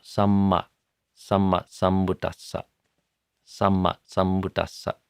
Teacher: when you have these two double consonants, there's a little bit of a stop that it creates